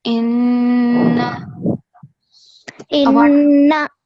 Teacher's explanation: the nasal sound, make sure that you do it for at least 2 seconds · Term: noon mushaddad